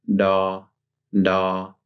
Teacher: that little gum ridge that's where you make the d sound